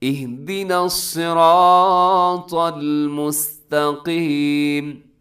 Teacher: مستا میں تا باریک ہوتا ہے، قاف آگے پھر موٹا آ گیا